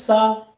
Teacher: सा ध्वनि का उच्चारण तालव्य, यानी ऊपर तालु में जब जीभ छूती है तो सा ध्वनि निकलती है